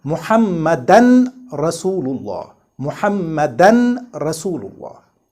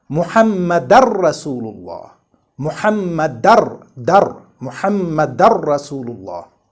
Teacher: With idgham between these two words Muhammad and Rasul sallallahu alaihi wasallam, without any noon or nasalization between them.